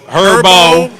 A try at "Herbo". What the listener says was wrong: The H is silent.